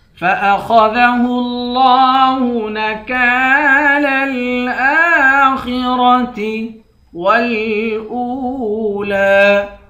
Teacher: خا اور را دونوں کو موٹا پڑھیں گے